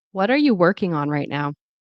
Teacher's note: So the stress on working right now.